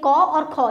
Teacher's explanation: ये जो क वर्ग होता है वो हमारा क्या होता है, कंठ ध्वनि होती है ना